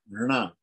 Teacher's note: So we have a dental nasal, right? That is na.